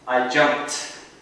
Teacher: jump, it's got a very aspirated P sound. So you might even hear this ed as a T sound.